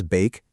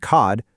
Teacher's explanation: it stretches out into a long sound that actually says the letter's own name